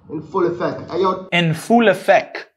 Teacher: The t is not pronounced.